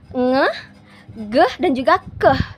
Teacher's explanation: ada gesekannya antara lidah belakang dan juga langit-langit mendekati langit-langit lunak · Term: dorsovelar